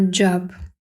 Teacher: наше J в транскрипції передається двома приголосними д з Дж і о читається не то О не то а